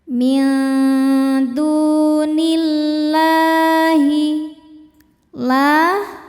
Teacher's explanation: Sebab ada alif lam yang di hadapannya bertemu huruf syamsiah yaitu huruf lam juga. Cara bacanya alif lam yang ini tidak baca. Jadi dari nun langsung kita masuk ke lam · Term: idgham syamsi